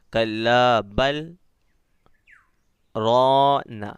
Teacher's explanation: بل بولنے کے بعد آپ آواز کو ختم کرنا، لیکن سانس توڑنا نہیں ہے، سانس کو باقی رکھنا ہے، اس کے بعد وہی سانس کے اندر ہی آپ کو رونا بولنا ہے، تھوڑا سا رک کے، کلا بل رونا، ٹھیک ہے؟ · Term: سکتہ